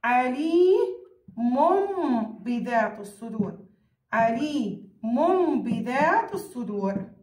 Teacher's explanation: ألغي تنوين وأقلبه إلى ميم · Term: إقلاب